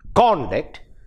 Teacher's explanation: Conduct, the stress is on the second syllable and it is used as a verb.